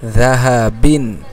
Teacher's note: জালটা একেবারে পাতলা করে উচ্চারণ করবে।